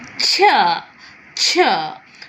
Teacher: We have a complete contact, but we have a gradual release. Like we tell t and sh together, ch, ch. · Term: affricate